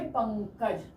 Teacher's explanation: पंकज कंठ से भी आ रही है और साथ में नाक से भी आ रही है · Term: नासिक्य